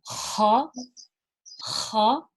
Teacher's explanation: So the Kha is pronounced from the top of the throat and it's very scratchy. Okay, so there's a slight gargle, but it's not really a gargle, it's more of just a scratch.